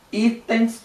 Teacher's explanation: Itens, o i é a sílaba mais forte também.